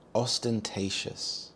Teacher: The stress is on the third syllable, te